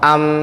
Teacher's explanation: Makhraj mukammalnya mim juga aktif, yakni kedua bibir yang merapat.